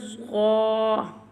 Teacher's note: Mustaliya letters that are always pronounced with a thicker voice